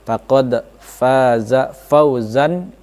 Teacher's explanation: Fauzan akan bertemu dengan huruf ain, dibaca harus jelas ya, di zahir dibaca jelas, tidak berdengung sama sekali. Faqad faza fauzan langsung azimah, tidak boleh fauzan dan dengung-dengung dan sebagainya, itu tidak boleh. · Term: izhar